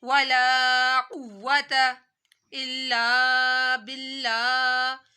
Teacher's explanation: यहाँ पर अल्लाह पतला पड़ा जाएगा, जा रहा है, क्योंकि लफ्ज अल्लाह से पहले जेर आ रही है